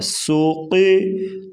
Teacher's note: سین پیش سو، قاف زیر قی سوقی، سین کو سختی سے اور قاف موٹا پڑھا جائے گا